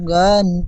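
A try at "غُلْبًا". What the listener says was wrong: হবে না, গন হয় না, গন বলছেন গয়িন। গন লাম পেশ না, গয়িন পরিষ্কার উচ্চারণ করবেন, আলিফ থেকে এ পর্যন্ত যেমন গয়িন পড়েছিলেন, এখানেও বলবেন গয়িন লাম পেশ গুল।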